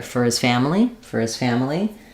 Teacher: And when I built it from the back, I was able to get that rhythm. Notice that our for becomes more of a fur. · our four for becomes more of a fur in reduced speech